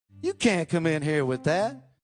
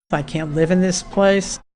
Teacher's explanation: In a blog post I wrote about how we don't always pronounce T and D clearly before another consonant, and that's true here too. Listen for how these speakers don't release the T at the end of can't.